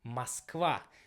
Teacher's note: in Russian it will be pronounced as Moskva, because the stressing will be on the last part